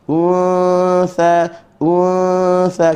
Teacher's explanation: ikhfa di sisi huruf, maknanya kena dengun di sisi huruf ta, dan kena ra'i nipisnya huruf nun kerana berada di sebelum huruf istifan.